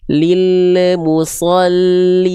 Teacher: huruf lam enggak boleh dipantulkan karena enggak punya sifat qalqalah